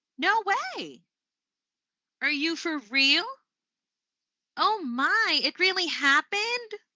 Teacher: that's how you would sound like when you're indicating disbelief with rising intonation